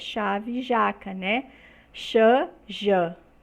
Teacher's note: são produzidos com a lâmina da língua contra a parte anterior do palato duro, ou seja, na frente do palato duro, logo após os alvéolos. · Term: sons palato-alveolares